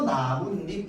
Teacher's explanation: 그래서 이 니은이 첨가된 이후에 시옷을 보니까 얘가 음절 끝소리 규칙에 의해서 디귿으로 바뀔 거고 이 디귿이 비음화 때문에 뭐가 되는 거야? 뒤에 나오는 니은 때문에 비음화가 돼가지고 니은으로 발음되는 거죠